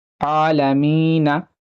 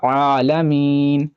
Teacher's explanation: नून पर ज़बर है, लेकिन अगर आप यहाँ पे रुकना चाहते हैं, वक्फ करना चाहते हैं, तो यहाँ साकिन हो जाएगा, आलमीना से पढ़ा जाएगा आलमीन।